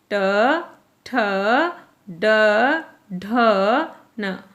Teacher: जैसे ट, जब हम ट बोलते हैं तो हमारी जीभ टच करती है मूर्धा को, और इसीलिए इन व्यंजनों को कहा जाता है मूर्धन्य व्यंजन।